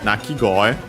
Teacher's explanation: The accent is on the go, so yeah, like koe.